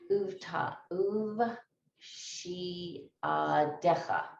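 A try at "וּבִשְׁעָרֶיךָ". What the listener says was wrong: U goes by itself. stop sign under here. U vish recha.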